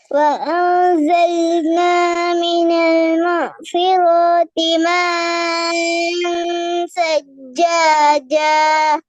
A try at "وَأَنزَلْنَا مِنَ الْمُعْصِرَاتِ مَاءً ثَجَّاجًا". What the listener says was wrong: மேன் சஜ்ஜாஜ் அப்ப எங்க அலிஃப் மேன் மாவும் சாவும் தான் ஜாயின் ஆகுது அலிஃபை காணுமே ஏட சவுண்டு விளங்குதா சொல்றது பிரச்சனை ஜைனப் நான் திருப்பியும் சொல்லன் எங்கட மூச்சு நாங்க சின்ன ஆக்கள் எங்கட